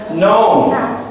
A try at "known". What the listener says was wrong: Not, there's no S here. It's just known.